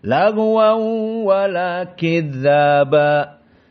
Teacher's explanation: qiraah Wars An-Nafi' masuk dengan qiraah jumhur membaca dengan idgham bi gunnah